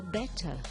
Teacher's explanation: And my accent is non-rhotic. Because the next word is going to start with a consonant, I stay with a vowel here.